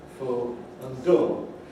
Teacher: full and dull, which again rhyme in the north of England as full and dull.